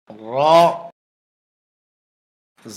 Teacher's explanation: জিহ্বার আগার পিঠ উপরের তালুতে লাগবে, মোটা হবে, বাংলা আকার প্রকাশ পাবে না